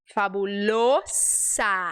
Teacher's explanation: Então esse o Você fecha e esse s é s não é Z